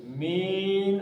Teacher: اب یہ دو حرکتیں تھیں لیکن اس پہ عارضی طور پہ آپ ساکن پڑھیں گے, عارض للسکون کے قاعدے کے تحت اس کو آپ 5 حرکتیں کھینچ سکتے ہیں